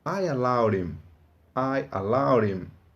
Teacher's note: Mas no inglês americano, geralmente esse H do him é mudo. E uma vez que o H do him é mudo, então o D do allowed fica entre duas vogais. O que quer dizer que no inglês americano você pode ouvir essa frase como I allowed him.